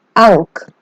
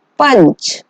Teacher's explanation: अनुस्वार, इसका उच्चारण करते समय नाक से अधिक वायु निकलती है और मुंह से कम। जैसे अंक। अंक जो है, अंक बोलते समय हमारी नाक से ज्यादा ध्वनि निकल रही है, इसलिए ये अनुस्वार का उदाहरण है।